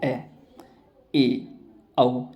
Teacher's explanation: जिन स्वरों का उच्चारण में मुख द्वारा आधा खुलता है अर्धविवृत स्वर कहलाता है